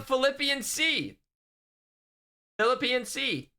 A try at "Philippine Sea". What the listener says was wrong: That's not how you say it. Philippine. Stop adding an extra syllable. Philippians, it's a book in the Bible. It's different.